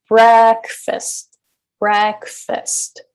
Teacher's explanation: the first syllable is higher in Pitch longer in duration and louder